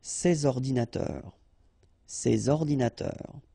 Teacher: so you should make the liaison between s and o,